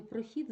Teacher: в слові прохід звук х наполовину пом'якшується перед наступним і